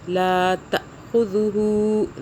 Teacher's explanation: لا جھٹکا دیں گے، حمزہ ہے